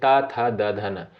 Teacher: त वर्ग के अंतर्गत जो वर्ड आते हैं जैसे त, थ, द, धन इनका उच्चारण साथियों कहां से होता है? दंत से होता है।